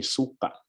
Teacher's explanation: you really have to emphasize the glottal stop on the last syllable